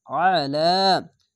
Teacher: আলা, খাড় যাওয়ার এক আলিফ টেনে পড়বেন। আইনটিকে মোটা করে গলা চিপে পড়বেন। আইন যাওয়ার আ, লাম খাড় যাওয়ার লা, আলা।